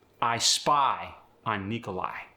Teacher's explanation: The long I stays the same, but gets an upward inflection.